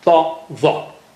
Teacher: ta and the are very thick and high sounding